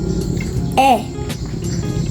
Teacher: this sound is a mid low front and unrounded vowel it's a short sound than a your tongue is lower and